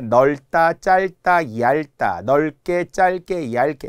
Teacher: 넓다, 짧다, 얇다, 넓게, 짧게, 얇게 이런 것들이 모두 리을로 발음해요